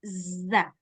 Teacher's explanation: enggak perlu keluar lidah ini yang sama makhrajnya dengan makhraj Sin dan Shad yang desisnya banyak